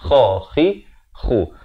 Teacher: Kha ni makhrajnya di hujung kerongkong ni.